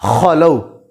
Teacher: ہم نے خا کو گلے کے شروع والے حصہ سے ہی نکالنا ہے